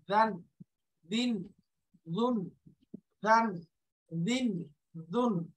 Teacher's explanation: দালের উচ্চারণ জিব্বার আগা, উপরের দাঁতের আগা, দান, এই যে দান নরম করে, দান দিন দুন, দান দিন দুন।